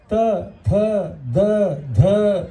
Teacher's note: ಹಲ್ಲಿನ ನಡುವೆ ಬರ್ತಾವೆ ಎಲ್ಲವೂ